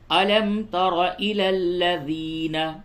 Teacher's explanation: را کو پر کر کے پڑھیں ، الم تر الی الذین، یا مدہ ہے تھوڑا سا کھینچیے،